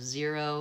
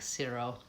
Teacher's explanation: Spanish speakers tend to always use an S sound, a devoiced Z. When they should be saying a Z, they'll say an S.